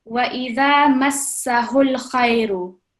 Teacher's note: And over here again, we have the blank alif here, and we're directly joining the ha with dhamma with the lam sakin